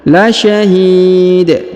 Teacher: Huruf dalnya disukunkan, kemudian kita kol-kolahkan ya di ujung. La syahid, dipantulkan ya.